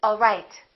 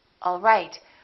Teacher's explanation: One is falling intonation and one is rising intonation.